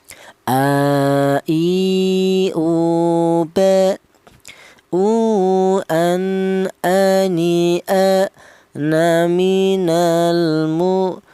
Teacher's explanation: Huruf hamzah keluarnya huruf berasal dari pangkal tenggorokan.